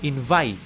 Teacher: Even though you see like a vowel at the end of this verb, invite, the sound ends with a T sound.